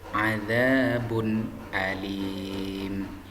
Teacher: Hukum bacaan idhar pengertiannya adalah idhar apabila ada huruf nun mati atau tanwin bertemu dengan salah satu dari keenam huruf idhar, maka nun mati atau tanwin dibaca dengan jelas tanpa mendengung